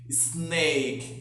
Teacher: a gente tem o costume de colocar como se tivesse um E antes, mas não tem